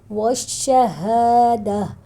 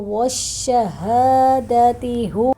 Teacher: والشہادہ، یہاں پر ہم وقف کریں گے تو ہا ساکن، تا کو ساکن کر دیں گے، ہا کی آواز میں ہو جائے گا